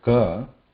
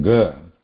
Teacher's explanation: ka is muted, ga is vibration, has vibration in it. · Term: nada or the vibration